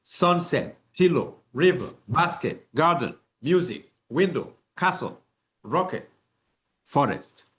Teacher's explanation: the stress is on the first syllable · all you need to do is to raise your voice on the first syllables and then lower your voice on the second syllable